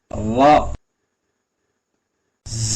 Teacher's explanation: இது ரோ இல்லாம ரா இல்லாம ரெண்டுக்கு இடைப்பட்டது